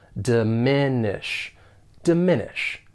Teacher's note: the verb has 3 syllables, and the stress is on that second syllable